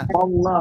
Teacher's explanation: Yang asalnya la menjadi lo. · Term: lafdul zalalah